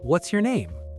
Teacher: Contract what is into what's and stress name. It's faster and way more natural.